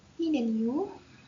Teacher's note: didn't you use a rising intonation to emphasize the question